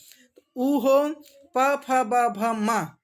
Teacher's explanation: ऊ हो प फ ब भ म, इनमें से कोई भी हो तो उसका स्थान ओष्ठ होता है।